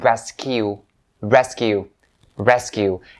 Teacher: the primary stress is upon the first syllable